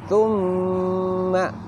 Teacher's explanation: Suara berdengung atau istilahnya hunah keluar dari al-khoisum atau pangkal hidung.